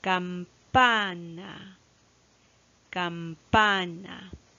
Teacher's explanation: Como vemos, la mayor fuerza de voz recae en este caso en la penúltima sílaba.